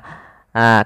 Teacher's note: ha itu adalah huruf yang kita keluarkan daripada makhraj yaitu tenggorokan tengah